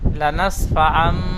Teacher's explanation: তানবিনের পরে বা এসেছে তানবিনকে মিমের দ্বারা পরিবর্তন করে পড়তে হবে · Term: ইকলা